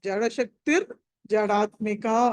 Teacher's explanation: చదవడం మాత్రం కలిపి చదివినప్పుడు అది విసర్గ బదులు ర అవుతుంది.